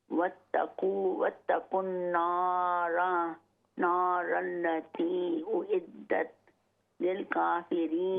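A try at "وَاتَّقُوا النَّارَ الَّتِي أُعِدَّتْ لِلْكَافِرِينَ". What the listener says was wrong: वत्तकुन नारल्लती, मत को लंबा कीजिए।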